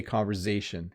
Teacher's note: why do you pronounce conversation with a zed sound or a z if you're american after the r · You hear a little Z sound come out.